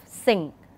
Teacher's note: the third nasal sound, ng, that's the final sound of sing. When you utter the word sing, the final sound is the ng sound. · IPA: /ŋ/